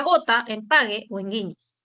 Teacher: el fonema oclusivo velar sonoro